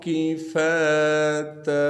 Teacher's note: تا پر جب وقف کریں گے پھر تا کو 1 الف کے مقدار کھینچیں گے